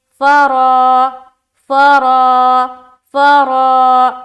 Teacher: अलिफ मद्दा को एक अलिफ की मकदार के बाकदर खींच कर पढ़ेंगे, जैसे फरा, फरा, फरा, मुँह भर कर।